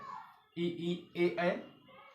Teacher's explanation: ई ए उच्चारण स्थान तालव है